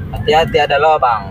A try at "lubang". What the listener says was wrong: Hati ada lubang, bukan lobang. Lubang.